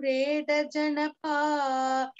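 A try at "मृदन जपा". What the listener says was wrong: No, you're doing Mreda Janapa, you're doing. It is Mredana Japa. You're saying Janapa.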